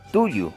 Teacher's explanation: la punta de la lengua se pone en contacto con la parte de atrás de los dientes superiores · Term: Consonantes dentales